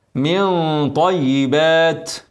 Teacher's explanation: نون ساكنه بعدها طا اخفاء حقيقي تاني لكن هنا الغنه مفخمه